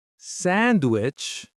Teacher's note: Sandwich. stress on the first syllable.